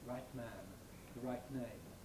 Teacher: there is the possibility of saying the right man with an exploded T, usually with that nasal release noise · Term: Nasally released T